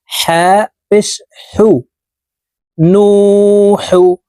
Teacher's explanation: হা হরফের উচ্চারণ হলুকের মধ্যখান থেকে পড়তে হবে